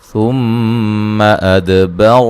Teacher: میم مشدد پہ غنہ ضروری، دال کو ہلا کے پڑھیں گے اور را کو موٹا ادا کریں گے